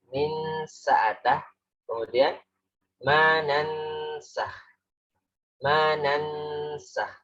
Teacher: samarnya itu nunnya samar. Tapi kemudian suara kita berpindah kepada suara sin. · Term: ikhfa